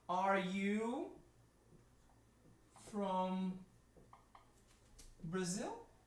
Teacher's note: the intonation of the question is up